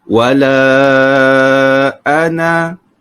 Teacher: di hujung pada lafaz ana ada tanda bulat walaupun ada alif, tapi kita tidak panjangkan.